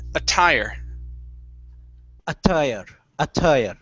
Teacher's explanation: Stress at the very end.